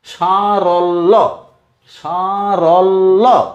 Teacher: লয় জফলা, যেমন ধরো সারল্য, সারল্য। লকে ছোট করে একবার, বড় করে একবার উচ্চারণ করলাম